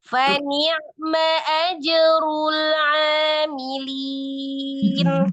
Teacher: lam sukun ajrul tidak terputus dengan huruf berikutnya karena dia tawassut, dialirkan sebagian ya.